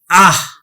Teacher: এই হটা অর্ধহ হিসেবে উচ্চারিত হল